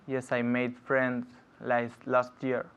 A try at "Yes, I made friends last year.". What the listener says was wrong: Good, last year. Excellent.